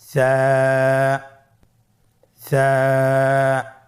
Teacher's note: সা হরফটির মাখরাজ হলো উচ্চারণ স্থান জিহ্বার আগা সামনের উপরের 2 দাঁতের আগার সঙ্গে লাগিয়ে উচ্চারিত হয়।